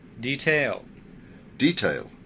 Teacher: คนอเมริกันนั้นจะลงเสียงหนักที่พยางค์แรกส่วนคนอังกฤษนั้นจะลงเสียงหนักที่พยางค์ที่สอง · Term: การลงเสียงหนักเสียงเบา